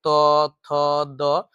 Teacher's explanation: आपका जिह्वा जो है वो दांत से आके जो है स्पर्श कर रही है और दांत से जो है उच्चारित ध्वनि निकल रही है। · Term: त वर्ग